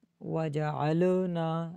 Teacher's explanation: آگے وجعلناہا، واو جیم عین تینوں کو نہیں کھینچنا، اور واو میں ہونٹ گول ہوں گے. اور لام جزم ہے، اس میں قلقلہ نہیں کرنا. وجعلنا، ل کی آواز نہ ہو.